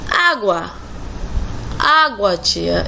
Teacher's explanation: O A sempre é vogal. Em relação ao U, percebemos que ele se torna mais fraco quando pronunciamos a palavra e no final o A ecoa. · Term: ditongo